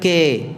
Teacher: Di mana ketika kita baca yatazakka, ini namanya imalah ya, bukan dengan imalah jadi miring atau seperti ya, tidak sempurna fathahnya, harusnya kan yatazakka, ka bukan ka, bukan pula ke ya. Kalau ke jelas miringnya ya, imalah kubra namanya.